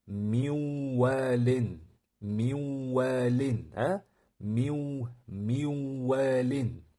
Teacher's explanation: ikki soniya ushlab turibmiz va nafas shu yerda burundan chiqadi. Maʼlum nafas dimoqdan chiqadi. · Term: idg'om